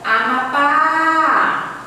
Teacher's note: Eu demoro mais no pá. Então, o pá aqui é a sílaba tônica. Como ela é a última, eu chamo ela de oxítona, certo?